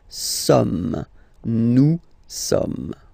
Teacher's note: So you don't pronounce the final S here. It doesn't exist.